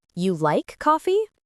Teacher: you like coffee said with a rising tone is a simple question, but you like coffee with stress on you might mean surprise.